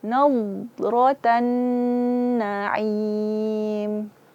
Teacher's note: Nun bertasydid adalah akmalul gunnah, gunnah yang paling sempurna. Maka sempurnakan gunnahnya.